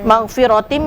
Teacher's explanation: mim nah ini hukum bacaannya tanwin bertemu dengan Wil tentunya idgham Idgham Bighunnah idgham disertai dengan dengung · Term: Idgham bi gunnah